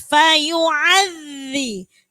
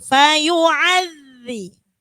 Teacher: Jadi jangan sampai fayu'adz. Fayu'adzi di situ zalnya harokatnya tasydid. Fayu'adzi ditekan, digigit dan ditekan. Fayu'adzi. Jadi jangan sampai enggak digigit nanti jadinya dal.